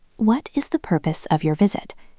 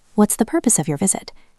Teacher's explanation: Did you hear how it changes at fast speed? What is becomes what's